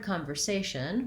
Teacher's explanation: in the word conversation we have second to last syllable stress that means the a is long and the other syllables are shorter